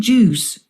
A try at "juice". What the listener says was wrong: Cái từ sờ. Juice xong sờ chút nữa.